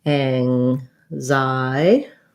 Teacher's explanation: our stress is on the Z, on the Xi syllable